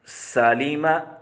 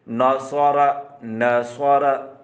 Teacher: سین کی آواز باریک اور سیٹی والی ہوتی ہے، جبکہ صاد کی آواز موٹی اور سیٹی والی ہوتی ہے